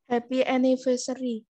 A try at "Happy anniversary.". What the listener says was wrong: Besok kalau kamu benar-benar mengungkapkan ekspresi congratulation, harus dari hati ya. Jangan happy anniversary kayak gitu. Temennya ngantuk nanti kan.